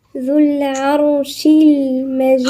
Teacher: الذال هنا من الحروف اللثوية